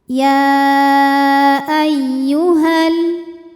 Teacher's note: Kemudian alif lamnya dinamakan dengan alif lam syamsiyah. Karena alif lam menghadapi huruf syamsiyah yaitu lam, maka alif lam tidak kita baca. atau disebut dengan idgham syamsi.